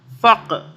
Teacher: وما انفق، فا قاف زبر، فا قاف زبر، فق، قاف پہ قلقلہ کریں گے، قاف پہ قلقلہ کریں گے، یعنی کہ طاقت سے پڑھیں گے، جھٹکے سے پڑھیں گے۔